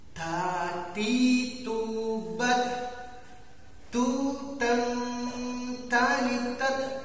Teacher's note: Ada hamas, ada tekanan angin ketika kita menyebut ta.